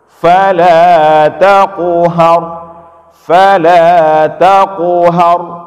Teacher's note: Taqu qalqalah, tetapi qalqalahnya bukan di ujung, bukan di akhir, tapi di tengah kata. Maka cara bacanya jangan berhenti. Jangan dibaca fala taqhar.